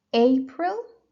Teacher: April so the stress is on the first syllable